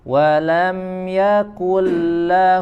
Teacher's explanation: ada izhar syafawi dijelaskan huruf mim-nya tidak disertai dengan ghunnah